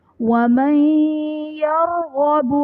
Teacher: نون ساکن کے بعد حروف یرملون میں سے یا ہے تو یہاں پر ادغام مع الغنہ کا قاعدہ ہے، یعنی نون ساکن میں ہم غنہ کر کے پڑھیں گے